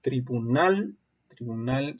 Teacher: su sílaba tónica también es la última pero termina en L y por eso no se acentúa o